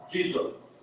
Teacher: in one word we have three sibilants already. We have three hissing sounds already.